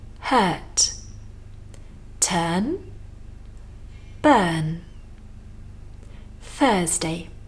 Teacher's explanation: Here we have, of course, our voiceless TH. And we have a strong UR. That's the same as in words like hurt, turn, burn.